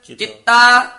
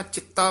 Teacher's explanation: ਚਿਤਾ ਨਹੀਂ ਕਹਿਣਾ ਚਿੱਤਾ ਬੋਲਣਾ ਹੈ ਕਸ ਕੇ